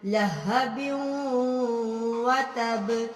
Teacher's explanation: یہاں پہ ملا کے غنہ کرنا ہے، ادغام بالغنہ ہو رہا ہے